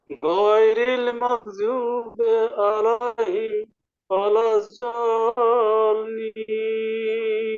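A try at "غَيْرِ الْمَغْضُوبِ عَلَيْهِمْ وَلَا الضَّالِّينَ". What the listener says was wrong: আপনার এখানে ভুল হচ্ছে। আবার এই যে গদ, এটা উচ্চারণ করার সময় জিহ্বার আগায় উপরে দুই দাঁতের আগায় লাগায় ফেলছেন, ওয়ালাযাল্লিন এভাবে বলতেছেন, এটা বলা যাবে না। জিহ্বার গোড়ার কিনারা উপরে মাড়ির দাঁতের গোড়ার সঙ্গে লাগাবেন। ওয়ালাযাল্লিন বলেন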